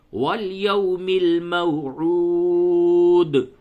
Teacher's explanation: اور قلقلہ کرے دال پہ، جب وقف کرے تو قلقلہ ہوگا